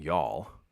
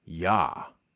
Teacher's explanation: L might become a W sound. The W sound might then be just a length on the vowel, and then it might be just completely deleted.